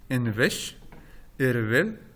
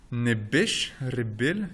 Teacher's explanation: Et donc, cette deuxième consonne, elle est brève et c'est une fricative. Eh bien, dans la forme intensive, il se trouve que cette deuxième consonne s'allonge. Et là, ce n'est plus une fricative, c'est une occlusive.